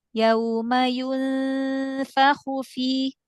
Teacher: Ikhfa'nya selesaikan tingkatan gunanya. Guna kamilah sempurna.